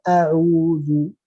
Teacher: A'udzu jangan sampai ada di hidungnya getaran.